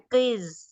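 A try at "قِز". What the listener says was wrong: हाँ, और जा में बहुत सीटी आ रही है, ये सीटी नहीं आनी चाहिए, जबान बाहर निकालें। क़िज़,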